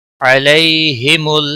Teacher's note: یالین ہے تھوڑا نرمی کے ساتھ کھینچ کر ادا کریں گے